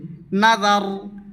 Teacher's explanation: জাল উচ্চারিত হবে জিহবার আগা সামনের দাঁতের আগা থেকে বারিক শব্দ পাতলা করে বলবে